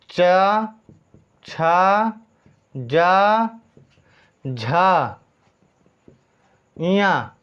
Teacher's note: इनका उच्चारण कहाँ से करते हैं? तालु से करते हैं। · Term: तालव्य वर्ण